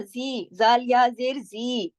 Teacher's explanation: زال کی آواز کو ہم نے کھینچا، یہ ہم نے یا مدہ کیا نا، تو یا مدہ کسر کے زمرے میں آتی ہے، تو یہاں یہ کسر ہو رہی 2 حرکات پڑھی جائے گی، اور توسط 4 حرکات، ٹھیک ہے.